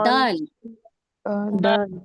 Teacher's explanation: दल नहीं कहिए दाल कहिए दाल दल मोटा नहीं करिए इसे दाल कहिए